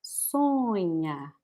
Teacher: The N makes the O become nasal.